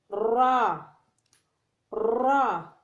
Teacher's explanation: زال کو زبان کی نوک اور ثنایا علیہ کا سرا ایک دوسرے سے ملا کر ادا کرنا پڑتا ہے، جیسا کہ سا ادا کیا جاتا ہے۔ را، را، را کو زبان کی پشت والا کنارہ اور اوپر والے دانتوں کے مسوڑوں کے ساتھ ادا کرنا پڑتا ہے